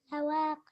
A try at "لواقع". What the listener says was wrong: لواقع. Let me hear the عين.